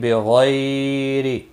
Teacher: زیر ہے، ایک الف کے برابر کھینچ کر پڑھیں گے، بغیر را زیر کی وجہ سے باریک ہوگا اور غین مستعلیہ ہے، پر پڑا جائے گا